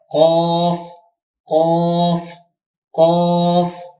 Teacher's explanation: 4 নম্বর মাখরাজ জিহ্বার গোড়া তার বরাবর উপরের তালুর সঙ্গে লাগাইয়া। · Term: 2 নুক্তাওয়ালা কফ